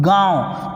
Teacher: यह नाक और मुंह दोनों से निकलता है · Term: अनुनासिक स्वर